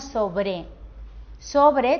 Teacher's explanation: sobre tiene la sílaba tónica en la penúltima